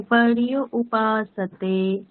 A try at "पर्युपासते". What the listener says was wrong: पर्युपासते নয়, पर्युपासते। একসাথে, একসাথে। पर्यु उपासते নয়, पर्युपासते, একসাথে।